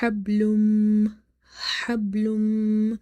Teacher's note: So here there will be a weak qalqala, and ha is from the middle of the throat.